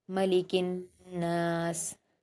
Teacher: काफ को नून से मिलाएंगे, हुरूफ शमसी का कायदा है। नून पर सेम कायदे हैं, गुन्ना और अलिफ मद्दा दो हरकत का।